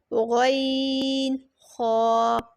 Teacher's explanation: حلق کے اوپر والے حصے سے ادا ہوتے ہیں، حلق کے اوپر والے حصے سے، یعنی کہ جو کہ ماؤتھ والی سائڈ ہے آپ کے تھروٹ کی، وہاں سے ادا ہوتے ہیں۔ اور یہ ٹو حروف ہیں غین خا۔